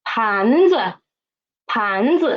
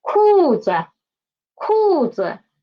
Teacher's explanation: When the neutral tone is after the first, second, and fourth, okay? First, second, and fourth tone, then the pitch of the neutral tone will be lower, okay, lower.